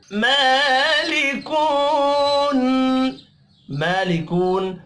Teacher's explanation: میم کے اوپر کھڑی زبر ہے، ایک الف کے برابر کھینچ کر پڑھیں گے